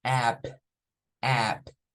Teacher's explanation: es como la a y la e mezclada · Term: sonido corto de la vocal